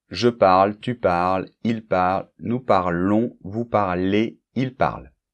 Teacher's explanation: on voit qu'elles sont toutes muettes, les terminaisons, sauf nous parlons et vous parlez